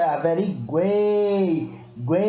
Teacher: Parece que eu nem pronuncio o U e o I, gente. É mais o E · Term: tritongo